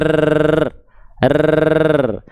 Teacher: kalau huruf R itu ya dia getarannya banyak biasanya R r sedangkan huruf ro getarannya enggak banyak.